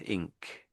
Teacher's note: can you feel that your tongue is lifting up at the back when you're making the ink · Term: NK sound